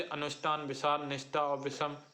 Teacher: ऊष्म व्यंजन है क्योंकि इन्हें बोलने में सांस की ऊष्मा चलती रहती है। ये संघर्षी होते हैं।